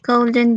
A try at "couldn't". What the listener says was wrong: Couldn't. Couldn't. The L doesn't sound. Couldn't. Couldn't.